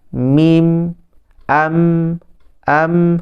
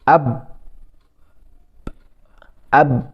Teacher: persamaan mereka ialah kedua-duanya makhraj syafatin yang dua bibir itu persamaannya maka mereka maksudnya kedua huruf ni lebih dekat pada makhraj maka